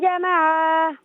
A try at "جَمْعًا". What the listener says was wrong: اچھا جمع نہیں، جمع، میم کو بالکل ساکن پڑھیں۔ جزاک اللہ خیر۔ ناظرین چلتے ہیں اگلے کالر کی جانب۔ السلام علیکم۔